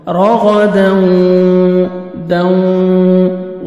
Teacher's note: یہاں پہ ہم نوز میں ساؤنڈ لے کے جائیں گے، غنہ کے ساتھ ادغام ہوئے گا